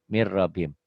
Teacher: Bunyi N-nya hilang jadi M, hudam. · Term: idgham